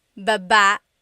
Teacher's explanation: Emphasis is on the second syllable. That means to go down. Baba. Like going down an elevator.